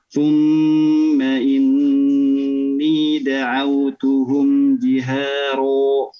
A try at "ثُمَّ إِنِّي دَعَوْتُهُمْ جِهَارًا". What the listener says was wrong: Coba ro-nya sudah bagus ya, getaran dan lainnya ketebalan. Tinggal coba diperhatikan huruf ro di sini ya, bukan betul-betul o bunyinya ya. Tapi fathah yang ditebalkan ya. Fathah yang ditebalkan. Jadi tidak betul-betul ro ya, tidak bulat betul-betul o ya. Tapi ro fathah yang ditebalkan.